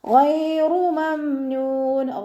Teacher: ഇസ്തിഅലാൻ്റെ ലെറ്ററാണ്, തഫ്ഹീം ചെയ്തിട്ട് ഉച്ചരിക്കുക. ഗൈനിൻ്റെ മഖ്റജ് അദ്നൽ ഹൽക്കാണ്, തൊണ്ടയുടെ ആദ്യ ഭാഗം ആ സൗണ്ടിൽ തന്നെ ഉച്ചരിക്കാൻ ശ്രദ്ധിക്കുക.